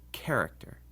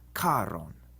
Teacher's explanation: That means we don't pronounce these like we usually do in English, where CH is ch, PH is f, and TH is th. Instead, in Latin, the CH is like a C with a breath of air after it, like the CH in character. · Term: aspirated consonants